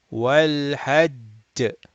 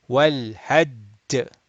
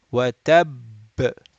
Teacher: Stop with strong qalqala. So we are going to make qalqala, but we are going to make it strong.